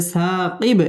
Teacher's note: খালি আলিফ মদের হরফ এক আলিফ টেনে পড়তে হবে